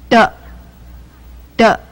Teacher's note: 齿龈，闭住气息，然后舌头离开齿龈的时候。让该气息突然由口腔放出，产生一种爆发音，声带不需要震动▁，t▁t，▁它近似国音的▁t▁t▁t，▁第二个子音▁d▁d，▁它的发音部位与上一个子音▁t▁相同，只是它的呼气较弱。而 声带需要震动，使爆发的气息变为有声的音